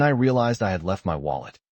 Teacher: In I had left had may reduce strongly while left remains clear. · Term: weak in natural speech